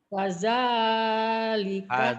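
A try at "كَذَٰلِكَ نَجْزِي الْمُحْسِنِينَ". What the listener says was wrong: Kada. Kedengarannya kayak fada. Kada.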